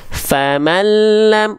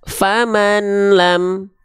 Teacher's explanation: Suara nunnya masih terdengar jelas.